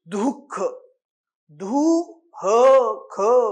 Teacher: विसर्गाचा उच्चार ह या वर्णाला हिसडा देऊन केला जातो.